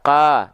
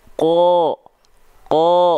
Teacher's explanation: Huruf qaf ketika dia berharokat fathah kan nggak dibaca ka, tapi dibaca ko.